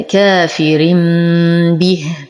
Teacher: يمد بالاشباع اول كافر به لدينا تنوين وبعده البا فالحكم اقلاب نقلب التنوين ميم ساكنه عند الباء مع غنه كامله